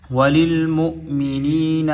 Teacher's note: میم پیش حمزہ مو، تو حمزہ جھٹکے کے ساتھ پڑھا جاتا ہے